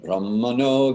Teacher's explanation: The dot under an N indicates once again, a closed sound on either end. So it's more in the back of your mouth rather than just right tongue behind your teeth.